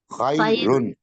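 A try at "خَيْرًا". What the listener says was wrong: خا کے اوپر خا کی آواز ہے، یا کے اوپر ساکن ہے جھٹکے پہ، خیرن۔ ہم لوگ کیا پڑھتے ہیں عام طور پر اردو والے؟ خیرن، خیرن آواز نہیں ہے عربی میں۔ اگلا لفظ خیرن، خا ای، جی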